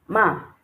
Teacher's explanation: The fourth one is the falling tone on the a. So you go ma.